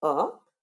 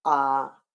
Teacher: लेकिन कितना ज्यादा? जितना समय ह्रस्व स्वर को बोलने में लगता है उससे लगभग दुगना · तो पहला है ह्रस्व स्वर, जिन्हें बोलने में कम समय लगता है। दूसरा है दीर्घ स्वर, जिन्हें बोलने में ज्यादा समय लगता है।